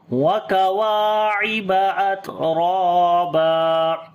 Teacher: تا کے اوپر صفت شدت اور ہمس دونوں کریں گے. را کو موٹا پڑھیں گے, اس کے اوپر زبر ہے اس وجہ سے, اور لمبا بھی کریں گے. الف مدہ ہے اور جب یہاں پر رکیں گے تب بھی الف مدہ آ جائے گی.